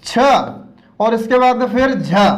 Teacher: इनको महाप्राण व्यंजन की श्रेणी में रखा गया है, क्योंकि इनका उच्चारण करते समय हमारे कंठ से या हमारे मुख से हवा अधिक निकलती है या श्वास की मात्रा अधिक लगती है।